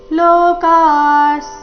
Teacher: ವಿಸರ್ಗದ ಉಚ್ಚಾರಣೆ ಅರ್ಧ ಸ ರೀತಿ